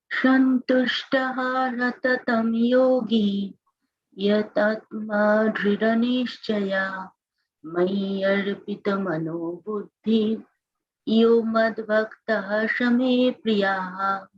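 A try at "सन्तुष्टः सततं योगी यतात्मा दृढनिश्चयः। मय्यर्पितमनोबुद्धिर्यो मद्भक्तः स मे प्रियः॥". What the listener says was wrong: Very nice. Come on, let's go one more round. Keep on doing it.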